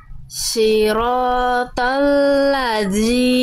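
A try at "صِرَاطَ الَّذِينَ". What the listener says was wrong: Nah, jangan ladzi, jangan digigit, jangan ditekan. Jadi cukup. Jadi Bunda, cukup sentuhkan tipis-tipis aja ujung lidahnya ke atas. Kalau terlalu ditekan kuat, sifat suaranya jadi agak mampet. Nempel tipis-tipis aja. Siratal ladzina.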